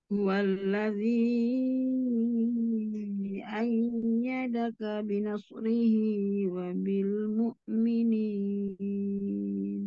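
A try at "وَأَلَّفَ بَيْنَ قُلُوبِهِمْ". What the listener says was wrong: Iya, Umi, mad jaiz, mad wajibnya 4 saja ya. Mad jaiz sama mad wajibnya 4 saja. Jangan sampai 6 ya. Kalau mau 5, tapi 4 aja ya, kepanjangan.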